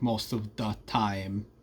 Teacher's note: So most of the time, THs are replaced with Ds